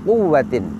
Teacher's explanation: Qaf termasuk huruf tafkhim. Namun dalam keadaan dhammah, qaf sebagai huruf tafkhim, cara pengucapannya sama dengan huruf tarqiq, yaitu sama-sama dengan membulatkan atau memanyunkan kedua bibir.